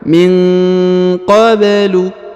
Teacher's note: Kemudian huruf ba dipantulkan karena berharokat sukun ya. Maka dia dikolkolahkan atau dipantulkan.